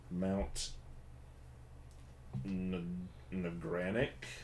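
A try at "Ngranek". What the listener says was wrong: No, I think it's just Granic. Granic. The N is silent.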